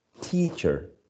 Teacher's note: teacher is stressed on the first syllable